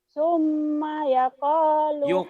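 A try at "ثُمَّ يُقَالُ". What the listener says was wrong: Yuko bukan yako.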